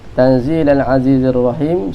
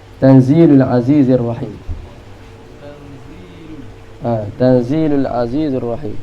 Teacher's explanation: Dia jadi lam tu baris depan, dhammul lam.